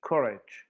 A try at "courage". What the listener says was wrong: I think it's too far back.